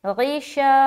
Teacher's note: الف خالی سے پہلے زبر ہے، الف مدہ ہوگا، الف مدہ کو ایک الف کے برابر کھینچ کر پڑھیں گے